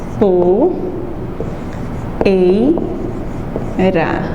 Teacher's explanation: o ei, poeira, eu tenho o E como vogal, mais o I, que vai ter o som menorzinho, semivogal.